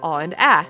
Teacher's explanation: Both are open and somewhere at the back of the mouth.